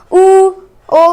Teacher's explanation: हमारे जो होठ है क्या हो रहा है, ये गोल आकृति में हो रहा है, गोलाकार हो रहे हैं। इसी को हम क्या कहते हैं, इनको गोलाकार, हम वृत्ताकार भी कहते हैं।